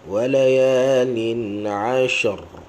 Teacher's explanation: ra jangan lupa, ra dalam tebalkan dia ada getaran